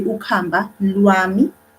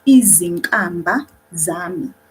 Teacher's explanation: It changed from k, which is aspirated, to nka.